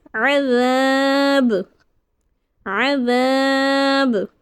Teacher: وقف کی حالت میں ہم دو پیش کو ساکن کر دیے تو با حرف قلقلہ میں سے ہے تو با کو قلقلہ کر کے پڑھیں گے۔ جب حرف قلقلہ ساکن ہو جائے گا تو ہم قلقلہ کریں گے عذاب، عذاب۔